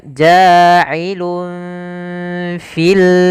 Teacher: Tapi ketika bertemu dengan fa, maka disamarkan suara lunnya kepada fa. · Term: ikhfa hakiki